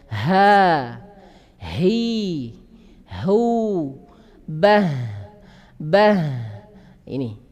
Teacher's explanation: Ha ini dia lemah. Sebab apa? Nafas dan suara mengalir keluar